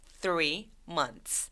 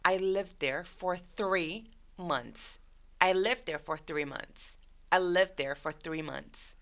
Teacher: 근데 이 단어는 천천히 발음하면 months 이런 식으로 TH 소리를 내면서 S로 가도 괜찮은데 문장을 말할 때 우리가 그렇게 천천히 말하지 않잖아요. 그래서 문장으로 말할 때에는 저 TH에서 H 소리가 삭제된다는 거죠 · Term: H 소리가 사라져요